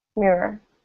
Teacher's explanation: the OR at the end is again this sort of neutral sound